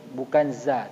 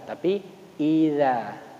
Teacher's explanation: za-nya adalah ujung lidah kita letakkan di gigi seri